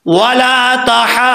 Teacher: ہا کے اوپر جو مد ہے اس کو لمبا کر کے 5 الف کے برابر ضاد کے ساتھ جو کنیکٹ کرنا ہے. جب ضاد کے ساتھ ملائیں گے تو ضاد کے اوپر جو شد ہے اس کو صحیح طریقے سے پڑھنا ہے، ٹھیک ہے.